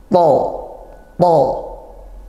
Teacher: kalau to tebal, maka pangkal lidah naikkan